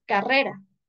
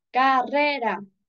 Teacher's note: la mayor fuerza de voz se encuentra en la segunda sílaba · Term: sílaba tónica